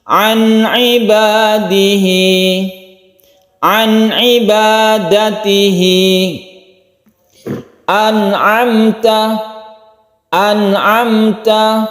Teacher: Nun bertemu dengan ain, nun mati bertemu dengan ain. Suara nun mati itu jelas dan tidak didengungkan,